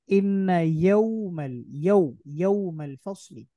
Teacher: এখানে ঠোঁট গোল করে ফেলবো ওয়াও বলার সময়